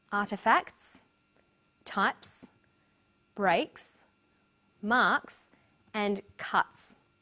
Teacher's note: The second way S is pronounced at the end of a word is s. It's pronounced this way after voiceless consonants. P, t, k, f and th.